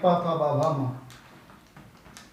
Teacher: ओष्ठ जब आपके होंठ टकराएं आपस में, तब बोलेंगे आप प फ ब भ म। बिना होठों को मिलाए आप इन शब्दों का प्रयोग नहीं कर सकते हैं।